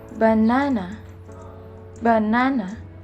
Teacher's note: Konsonan ini disimbolkan dengan huruf B. Konsonan B ini masuk ke dalam bilabial, plosive, dan voice sound.